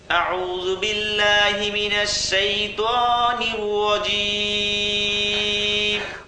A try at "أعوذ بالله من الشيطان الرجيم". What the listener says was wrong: ত যদি আরেকটু মোটা হয় তাহলে আরো সুন্দর হবে। ত শাইতানির রাজিম।